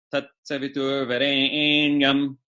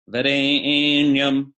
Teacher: So varenyam, there's that E or A vowel is prolated, which means it has an extra beat. It's extra long. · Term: extra long E